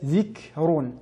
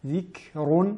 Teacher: en mettant en valeur le souffle accompagné de la lettre kef. Zik et non ذِكْرٌ.